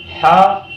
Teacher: ہا بڑا والا ہا ہے، یہ حلق کے اندر سے نکلتا ہے